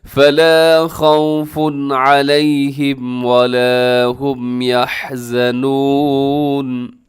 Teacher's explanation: پیش والی تنوین، اور آگے علیہم کے شروع میں عین ہے، تنوین کے بعد حروف حلقی آ گیا ہے، یہاں تیزی سے پڑھیے گا، غنہ نہیں کرنا